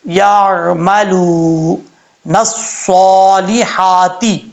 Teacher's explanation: یا کے بعد جو عین آ رہا ہے، عین کو قلقلہ کے ساتھ نہیں پڑھنا